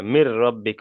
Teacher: মিন নয়, এখানে মিন হবে না, নুনটা তো উচ্চারণ হচ্ছে না, এখানে ডাইরেক্ট উচ্চারণ না, হবে মির, মিম রজের মিন, মির।